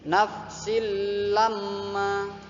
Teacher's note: Langsung dibaca silamma tanpa mendengung sedikit pun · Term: idgham bila gunnah